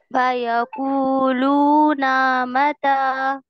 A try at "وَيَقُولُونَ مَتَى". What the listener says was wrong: نا متا نہیں. وَيَقُولُونَ مَتَى. ابھی بھی کھینچ رہا ہے. وَيَقُولُونَ مَتَى.